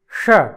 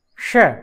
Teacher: जिसका उच्चारण हम मूर्धा से करते हैं इसलिए इसको मूर्धन्य षकार कहते हैं, और श दांतों से उसका उच्चारण होता है